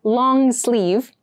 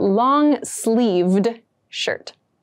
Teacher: make sure you clearly pronounce that d sound at the end